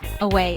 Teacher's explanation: It has two syllables. The stress is on way.